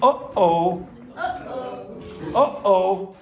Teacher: That's the glottal stop, the stop in the middle. So it's not oh, it's oh.